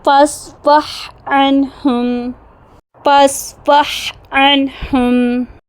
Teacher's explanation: ساکن ہونے کی وجہ سے ہا پر سانس کا بہاؤ سب سے زیادہ نمایاں ہوتا ہے · آخر میں ساکن حرف پڑھتے ہوئے تو مخرج کھلا رہنے کی وجہ سے ہوا کا اخراج اور گلے سے ایک دھیمی پھونک صاف محسوس ہوتی ہے